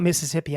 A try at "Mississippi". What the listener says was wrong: MISSISSIPPI. I feel like you skipped the middle S's when you I think the first time you said MISSIPPI.